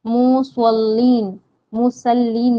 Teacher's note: स्वाद हरूफ मुस्तालिया में से है, पूर पढ़ा जाता है